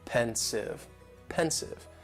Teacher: just 2 syllables, and the stress is on that first syllable.